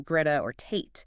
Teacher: you have a complete stoppage of air flow, which then releases abruptly. That gives them a sharper, more percussive, almost jagged feel. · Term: voiceless stop consonants